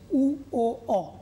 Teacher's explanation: দেখো জিহ্বাটা ধীরে ধীরে পেছন দিকে চলে যাচ্ছে, উ ও অ, তাই এদেরকে বলছি পশ্চাৎ স্বরধ্বনি।